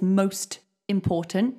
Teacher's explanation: so the T actually goes in front of important